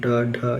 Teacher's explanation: उच्छिप्त व्यंजन क्या होते हैं? इन व्यंजनों में जीभ झटके के साथ ऊपर उठने के पश्चात नीचे आती है।